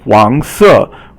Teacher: Now, 黄 is second tone, and it means yellow. And 黄 色, 黄 is second tone, and then 色 is fourth tone. And so 黄 is rising, and then 色 is falling